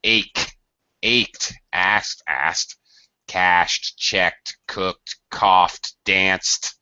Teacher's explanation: when you add ed to it, it always will be pronounced with a T sound